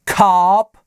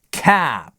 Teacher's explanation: это cop с задним и cap с передним cop, cap